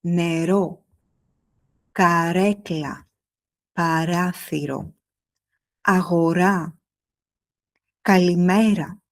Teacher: Tu n'as pas besoin de faire un très long r. En grec moderne, le r est souvent bref. Il doit être clair, placé à l'avant, mais pas forcément exagéré.